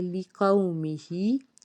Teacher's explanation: اس کے بعد ہے لِقَوْمِهِ، لام زیر لی، قاف واو زبر قو، میم زیر می، ہا کھڑی زیر ہی، لِقَوْمِهِ، واو ساکن سے پیچھے زبر ہے تو واو لین کا قاعدہ ہے، اس کو ہم نے جلد ادا کرنا ہے اور نرمی کے ساتھ، اور ہا کے نیچے کھڑی زیر ہے تو اس کو بھی ایک الف کے برابر کھینچ کے ادا کریں گے۔